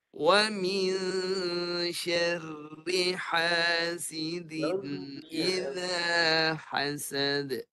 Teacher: getarkan suara roh yang nipis itu, hujung lidah yang diruncingkan.